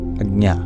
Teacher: the transition from the J to the palatal N sound is very quick, so you don't hear the J, stereotypical of the J sound, but it's there.